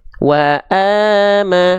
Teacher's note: Oke, selanjutnya hamzah di sini karena berharokat baris atas atau fathah, dia dibaca sama dengan vokal a, jadinya a, tapi kadar panjangnya bukan cuma satu harokat. Kadar panjangnya itu harus dua harokat. Nah, ya. Jadi kalau menemukan ada fathah tegak seperti ini, teman-teman sekalian, dia mesti dibaca dengan kadar panjang dua harokat. · Jadi kalau menemukan ada fathah tegak seperti ini, teman-teman sekalian, dia mesti dibaca dengan kadar panjang dua harokat. Ya, vokal A-nya dua harokat. Nama hukum tajwidnya sama, matobi'i. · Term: mad asli